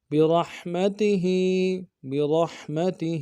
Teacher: را کو ہا کے ساتھ ملانا ہے، ہا کو گہرائی سے ادا کریں گے · ہا کے نیچے کھڑی زیر ہے، ایک مقدار میں کھینچیں گے